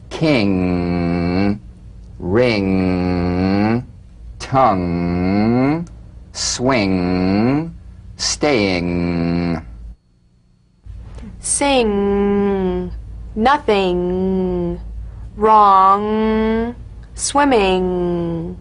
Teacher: So sing with the back of the tongue in contact with the soft pallet. Back of the tongue to the soft pallet vibration coming through the nose. Feel a twangy nasal resonance. · Now, the use of the NG is more complex and there's a common confusion about the correct use of the G or K drum beat following the NG. So, practice the final NG with no drum beat as the tongue leaves the soft pallet at the end of the wording. · The NG is a voiced tonguebacked soft pallet nasal consonant. So sing with the back of the tongue in contact with the soft pallet.